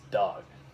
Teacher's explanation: the O sound is like no, but here it's dog. It's nice and short because it's cut off by a consonant of the G.